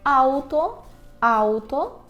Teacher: вимовляємо ау, не ав, а ау